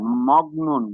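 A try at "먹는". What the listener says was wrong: মংনুন হবে, মংনুন। ক না, অং উচ্চারণ হয়ে যাবে।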